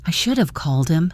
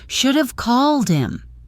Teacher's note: You'd likely hear, "I should have called him." The have gets reduced to just the H in him disappears and it all links together